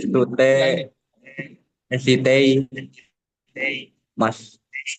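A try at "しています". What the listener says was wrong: Cara bacanya ini dipenggal di sini. Tidak sitei dan mas, tapi site imas.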